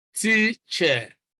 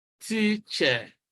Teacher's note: Now, you can notice that stress is on the first syllable, teacher. The second syllable is unstressed. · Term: stressed syllable